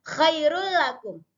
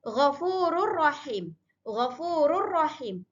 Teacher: tidak boleh ada dengung di antara tanwin dengan huruf lam.